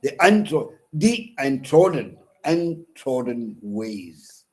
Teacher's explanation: An unstressed syllable is followed by a stressed syllable.